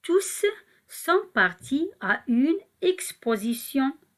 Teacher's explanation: on va écrire le mot tout avec un S, tous, et on va prononcer le S